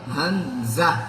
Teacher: حمزہ ہا سینے کی طرف سے نکالیں گے